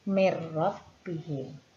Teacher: terdapat huruf nun sukun bertemu dengan huruf ro, maka huruf nun sukun dimasukkan ke dalam huruf ro. Cara membacanya mir rabbihim. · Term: idgham bila gunnah